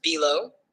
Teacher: B is unstressed, and low is stressed.